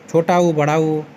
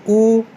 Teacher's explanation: उ का उच्चारण स्थान ओष्ठ है